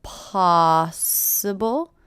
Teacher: possible first syllable is stress